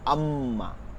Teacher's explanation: মিম ঠোঁটের শুকনা জায়গা, এখান থেকে ম হয়, ম বাংলায় ম, দেখেন থেকে মায়ের জোরটা কেমন, আম্মা।